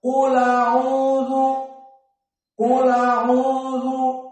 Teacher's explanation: lamnya yang sukun menjadi fathah dan hamzahnya dihilangkan, maka dibaca qul a'udzu, qul a'udzu, seperti itu. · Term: naql